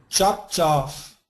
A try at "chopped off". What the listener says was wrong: Make this more of a D. Chopped off.